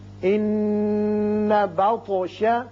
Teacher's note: نون مشدد ہے، غنہ کیجئے، اور طا ساکن ہے چونکہ اس لیے اس کی صفت قلقلہ ادا کریں گے